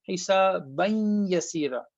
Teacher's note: So this noon is gone. Only the nasalization has been left with all of this.